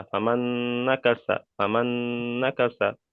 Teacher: নুনের উপর তাজিদ এসে দুবার উচ্চারণ হবে